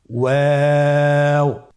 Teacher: 2 ঠোঁট গোল করে মাঝখানে ফাঁক রেখে হরফটি উচ্চারণ করতে হবে · ওয়াও হরফটি উচ্চারণের ক্ষেত্রে বারিক হবে এবং 3 আলিফ টেনে পড়তে হবে